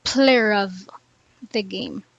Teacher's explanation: When a word ending in is followed by a word beginning with a vowel, we see a linking R in non-rhotic dialects